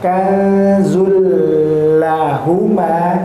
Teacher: Nun sukun atau tanwin ya di sini tanwin bertemu dengan salah satu huruf idgham tanpa disertai ghunah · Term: idgham tetapi bila ghunah